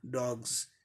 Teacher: इस वर्ड का last sound जो है गॉ है जो वॉइस्ड है, इसीलिए इसका यस का उच्चारण जॉ जैसे होगा